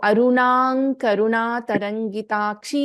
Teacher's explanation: ದಿ ಅನುಸ್ವಾರ gets replaced by fifth letter of ತವರ್ಗ which is ನ